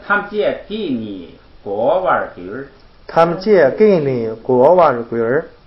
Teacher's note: 7个字一句，哎，你要注意一下这个节奏，哎，一般是1、3、5什么比较重